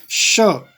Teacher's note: जिह्वा जो है तालु से जब संपर्क करेगी तो इस श का उच्चारण होता है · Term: तालव्य